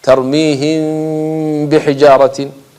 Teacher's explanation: ميم ساكنة جاءت بعدها با حكمها إخفاء شفوي